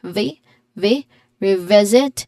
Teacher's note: the stress is on the second syllable of revisit